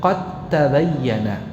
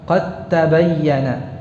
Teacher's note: Namun dal dan ta itu keluar dari makhraj yang sama, yaitu dari ujung lidah. Ya, yang menempel pada pangkal gigi jari atas. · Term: mutajanisain